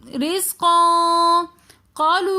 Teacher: رزقن کے اندر قاف کے دو زبر کی تنوین کے بعد اخفا کے 15 حروفوں میں سے قاف آ رہا ہے تو اس لیے ہم یہاں پر غنہ کر کے پڑھیں گے. رزقا قالو کے اندر الف مدہ آ رہا ہے تو اس لیے ہم یہاں پر قا کھینچ کر پڑھیں گے. دوبارہ پھر واو مدہ آ رہا ہے تو ہم قالو تھوڑا سا کھینچ کر پڑھیں گے.